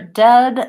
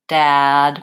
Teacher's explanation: for dead, my mouth is less open versus dad, my mouth is more open.